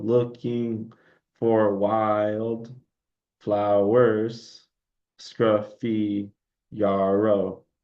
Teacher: So we have the unstressed stress syllable, unstressed stress syllable, unstressed stress syllable, unstressed stress syllable.